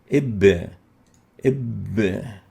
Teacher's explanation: It articulates at the lips, and that's why we classify it as a labial letter.